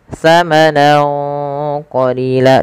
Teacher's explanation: Cara membacanya yaitu samarkan suara nunnya kepada huruf qaf awalnya samanan, karena bertemu qaf samanan qalila, dan ditahan dengungannya sepanjang 2 harokat. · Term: ikhfa